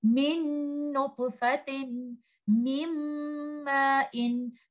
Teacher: in case of noon and meem, the gunna is from the following letter, not from the sakin letter noon. And you will hold the gunna for some time, and you will recite these examples like this. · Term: complete merging